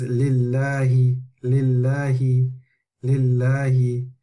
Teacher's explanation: So in the above example, the name of Allah is preceded by kasra, and therefore the lam of Allah will be read with tarqiq, yani a light sound.